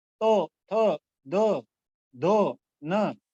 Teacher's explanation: ये हमारी जो जीवा है, ये जीवा ऊपर वाले दांतों को हल्का सा टच करती है, स्पर्श करती है, तब इनका उच्चारण होता है। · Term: तवर्ग